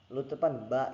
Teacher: ba itu terletak di bibir ya teman-teman, di bibir nih, di bibir. Lalu dia itu sifatnya itu letupan